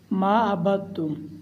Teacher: دال نہیں پڑھا جائے گا، دال سائلنٹ ہوگا، با کو تا کے ساتھ ملائیں گے